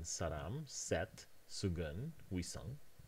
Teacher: we only see the [s] whenever it is not followed by the sound [i] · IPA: [saɾam], [sɛt], [sugʌn], [wisʌŋ], [saɾam]